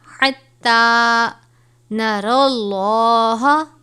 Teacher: اللہ کے لام سے پہلے زبر ہے تو ہم اس کو پر کر کے پڑھیں گے